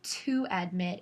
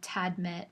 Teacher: the vowel in the two and the vowel at the beginning of admit that they'd kind of align together so that instead of two admit it'd be tadmit so that